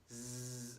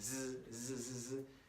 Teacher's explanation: It kind of explodes at the beginning, whereas in English it's kind of z. It doesn't really have that real hard beginning.